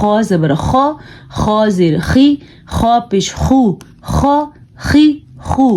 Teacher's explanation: غین اور خا حلق کے شروع والے حصے سے ان کی آواز نکلتی ہے